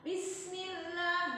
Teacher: Jadi ketika bunyi sin itu sempurnakan dulu sinnya, hamznya yang kira-kira ada istifalnya, yang ada terus yang sekiranya ada istifalnya gitu. Terus syafir, siul harus ada kayak di bismillah. Bismillah. Nah, ketika baca sin, bis itu sinnya sempurnakan dulu baru bunyi mi.